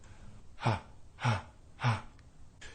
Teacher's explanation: you can hear how breathy the voice sounds due to how loose and decompressed the chords are